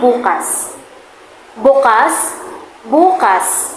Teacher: Kapag naman ang diin ay nasa huling pantig, nangangahulugan nitong tomorrow.